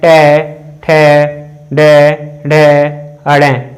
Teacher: अगर मैं ट वर्ग के उच्चारण स्थान की बात करूं दोस्तों तो इनका उच्चारण मूर्धा या कह सकते हैं हम मूर्धन्य। इनको हम मूर्धा या मूर्धन्य व्यंजन के रूप में जानते हैं।